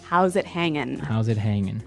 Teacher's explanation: have a g at the end iing G right yeah but usually you don't really pronounce the G in this context cuz it's very informal